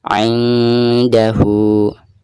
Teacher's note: nun sukun atau nun mati lalu berhadapan dengan huruf dal yang merupakan salah satu daripada huruf ikhfa ya, maka cara membaca nun sukun tersebut itu harus disamarkan. · Adapun ketika membaca hu-nya di sini dihukumi mad silah qasirah, karena ha dhamir berhadapan bukan dengan huruf hamzah ya, maka dibacanya 2 harokat